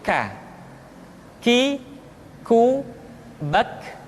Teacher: Selanjutnya huruf K diucapkan dengan mengangkat pangkal lidah kita ke posisi di depan huruf Qaf. K diucapkan dengan mengalirkan nafas kita.